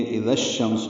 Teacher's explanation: دال کو نرمی سے پڑھیں گے، اذا اور الشمس ملا دیں گے، اذا الشمس ہو جائے گا، ادغام شمسی ہے